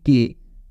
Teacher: तो यहाँ पे कुछ कुछ वर्ड मतलब कुछ कुछ अल्फाबेट साउंड है, आप यहाँ पे बोल के चेक कर लो एक बार, जैसे कि के, ठीक है, back of the tongue use हो रहा है, that is active articulator, passive क्या है, सॉफ्ट पैलेट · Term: वेलार